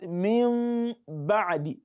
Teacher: So, to make it easy, we change the nun sakina to that mim, which has the same articulation point as ba. Again, we change the nun sakina to mim, which has the same articulation point as ba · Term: iqlab